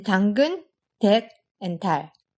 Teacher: But in Korean, the tongue is a bit further forward. You're basically almost touching your front teeth with the tip of your tongue. · it's unvoiced and slightly less aspirated than its English counterpart. It's also made in a slightly different spot in your mouth. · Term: lax T